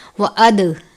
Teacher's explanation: دال پر قلقلہ کرتے ہیں، اسی لیے دال کو واضح کر کے پڑھنا ہے. اد نہیں پڑھنا بلکہ اد پڑھنا ہے، یعنی دال پر آواز کو روک دینا ہے.